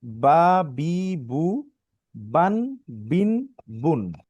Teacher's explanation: দুই ঠোটের ভিজা জায়গা হইতে উচ্চারণ হয়